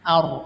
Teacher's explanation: Nah, huruf ar ini ada ro-nya ya, yang dibaca itu ro-nya ya. Ro-nya itu dihukumi dengan ro tafkhim yang artinya tebal, ro tebal. Nah, ro tebal ciri-cirinya adalah ro sukun yang sebelumnya adalah fathah.